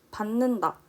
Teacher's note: 원래 디귿 받침이지만 니은으로 발음 나고 있어요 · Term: 비음화